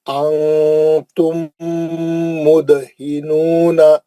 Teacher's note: انتم مدہنون, انتم مدہنون, نون ساکن کا اخفا حرف تھا, میم ساکن کا ادغام شفوی حرف میم, دال کا قلقلہ صغرا